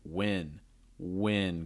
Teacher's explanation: usually that second win has a falling intonation it's like when when going down when win/win/win the first one